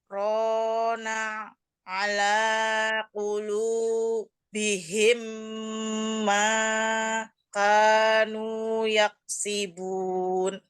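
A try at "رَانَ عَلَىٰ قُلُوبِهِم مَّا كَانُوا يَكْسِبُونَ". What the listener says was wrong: Menjeda-jeda di setiap kata. Rona, ala, kulu, bihim, ma, kanu. enggak ada saktahnya di sini. Nah, ini kalau begitu, ini sakta, sakta, sakta, sakta. Nah, ini perlu diperbaiki ya.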